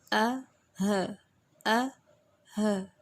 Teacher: یہ اقصی حلق یعنی حلق کے دور کے حصے سے ادا ہو رہے ہیں